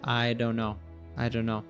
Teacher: it links to the N sound, the N from don't to the N sound in no. So it becomes I don't know.